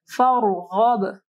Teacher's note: را سے پہلے دیکھیں فا کے اوپر جو ہے زبر ہے، تو را جو ہے موٹی پڑھی جائے گی · غین کو بھی جو ہے موٹا پڑھنا ہے اور با کے اوپر کلکلہ ہوگا.